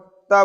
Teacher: त वर्ग, त बोलिए तो बोलते समय आपकी जो जीभ होगी वह आपके दांतों से टच होगी तो यह क्या हो जाएगा, दंत व्यंजन हो जाएगा।